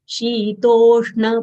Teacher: This is not dental na, it is retroflex or cerebral na, as it is denoted by an underdot below n letter.